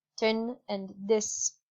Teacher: they are pronounced more like a t or d